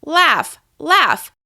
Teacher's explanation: this word ends in the f sound, even though the last 2 letters are G and H. Laugh. That is also a voiceless sound.